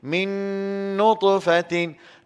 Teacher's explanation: Nun mati jumpa dengan nun. Hukum apa sini? Idgham. Dengung dua harakat sini. · Nutfatin kita melantun juga di sini sebab ta daripada huruf qalqalah juga.